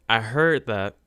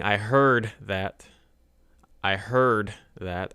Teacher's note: I'm not really focusing on the D here D is very silent